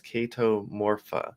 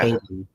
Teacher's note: the CH in Chaeto is pronounced with a hard K sound, similar to kite or key, rather than the ch sound like in cheese. So It's like a silent H.